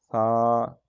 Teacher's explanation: ثا جو ہے اس میں سیٹی بھی نہ ہو اور بالکل اس میں جو ہے وہ آواز اور ہوا بند بھی نہ ہو جائے